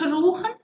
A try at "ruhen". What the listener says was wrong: So on ruhen, you're giving us a very the sound is far back. and it just seems to me that there's no reason not to project both there and in the next bar.